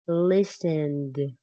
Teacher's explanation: But listened ends with a d sound, less strong than looked.